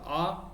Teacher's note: मध्य में आपका एक आएगा आ, और आ जो आएगा वो यहाँ से गले से बोला जाता है, यानी कि जो जीभ का लास्ट वाला भाग है यहाँ से बोला जाएगा